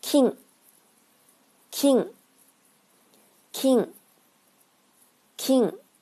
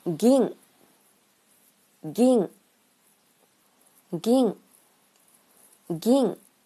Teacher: 下面的单词是金和银，金是清音，银是浊音